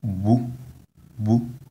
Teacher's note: there is a high tone on the vowel u